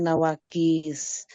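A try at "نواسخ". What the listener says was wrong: Nawasih, bukan nawakis. Nawasih. Nawasih. Ya, sin dulu, bukan kaf dulu. Nawasih, bukan nawakis.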